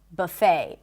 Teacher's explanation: In American English, the T is not pronounced.